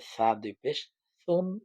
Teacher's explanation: আপনাকে উচ্চারণ সঠিক ভাবে করে পড়তে হবে তাহলে সা হচ্ছে যে আগা সামনের উপরে দুই দাঁতের আগার সাথে লেগে নরম করে